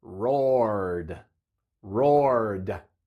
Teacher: suena como d porque r es una consonante Sonora